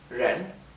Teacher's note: la palabra persona es Ren con el tono ascendente